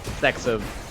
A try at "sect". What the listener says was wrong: and sect, yeah, like the T. Sect. sect.